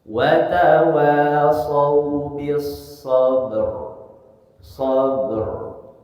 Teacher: Ba-nya pantulkan dulu karena qalqalah, kemudian ro-nya alirkan, takrir suara tawasudnya alirkan sedikit.